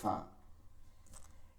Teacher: নিচের ঠোটের যে পেট আছে এই পেটটা উপরের দাঁতের সাথে লাগায়ে করা হয় ফা।